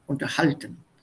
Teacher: Stress is on the second syllable.